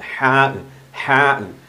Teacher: തൊണ്ടയുടെ മധ്യത്തിൽ നിന്നാണ് ഹാ പുറപ്പെടേണ്ടത്.